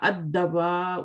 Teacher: اس وقت آپ کا لام نہیں پڑھا جائے گا، اس کو اسکپ کیا جائے گا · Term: شمسی